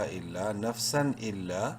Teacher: نف، سین دو زبر سن، نفسن، اور تنوین کے بعد چونکہ حمزہ حروف حلقی میں سے ہے اس لیے اظہار ہوگا، یہاں پر ظاہر کر کے پڑھیں گے ، حمزہ لام زیر الا، الف زبر لا، الا نفسن الا،